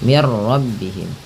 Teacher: Nah, karena di sini nun mati bertemu ra, langsung saja diidghamkan. Idgham itu memasukkan bunyi nun ke ra sehingga bunyi nunnya tidak terdengar lagi. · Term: idgham bila gunnah